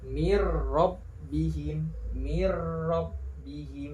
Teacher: Maka mirrobbihim di sini dinamakan hukum bacaan idgham bila gunnah. Cara membacanya dimasukkan tapi tidak didengungkan.